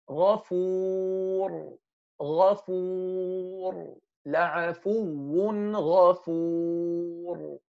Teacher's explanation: The ra at the end of this word is heavy and it has sukoon.